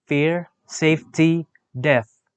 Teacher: The description of f is voiceless labiodental fricative.